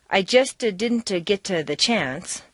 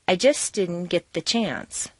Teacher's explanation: because the ending st of just and the beginning d of didn't are so near each other in the mouth, it's not worth the effort to start the sound all over again, so they just flow into each other